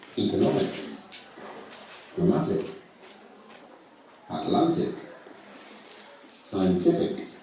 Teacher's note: Again, all these words have the stress on the second last syllable.